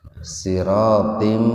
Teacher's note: Kasrotain ketemu dengan mim, jadi dimasukkan ke mim dengan mendengung. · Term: idgham bigunna